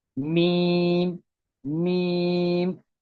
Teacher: और दोनों होठों के खुश्क हिस्से के जो बाहर होता है उससे मीम अदा होता है।